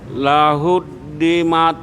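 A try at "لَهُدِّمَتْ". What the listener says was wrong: Ada anginnya Pak. Mat. Kasih angin Pak. Disebulin sengaja. Mat. Karena kita kan nggak ada ngucapin pakai hamus kayak gitu.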